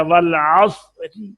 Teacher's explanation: अगर पेश पे करेंगे तो वो तीसरा हिस्सा ज़ाहिर करेंगे तो रा पुर होगी, और अगर जेर के पर वक्फ किया वल अस्र, तो ये रा के नीचे जेर पड़ी गई, तीसरा हिस्सा हम इसको जेर गिने के भी यहाँ पड़ी गई है, तो फिर रा के नीचे जेर होने की वजह से रा को बारीक पढ़ेंगे